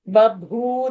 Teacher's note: First ba is alpa prana. Babhu, that is only mahaprana.